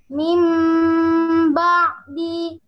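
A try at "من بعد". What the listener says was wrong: Coba ainnya. Mim ba'di.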